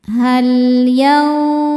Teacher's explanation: Hal lam sukun disebut lam mutlak. Ada lam sukun yang tidak berhadapan dengan lam lagi ataupun ro. Dibacanya jelas.